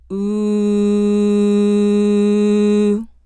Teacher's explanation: lips tightly rounded making the corners of the mouth push together the ooh is tense so it is long in duration tension should be felt in the jaw lips and tongue